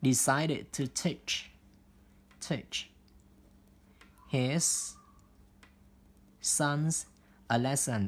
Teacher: thì cái phần ed đây chúng ta sẽ phát âm là it